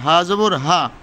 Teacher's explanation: হা জবর হা, হলকে শুরু হইতে